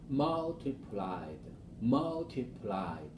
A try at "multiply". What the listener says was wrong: Okay, both of them you were saying with a d ending. So we want to try to remember this one, the first one will be with a Y on it, without any ed. Multiply.